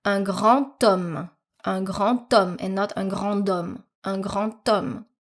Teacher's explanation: For the final D, for example, in grand, you are going to hear it as a T, the T sound. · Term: liaison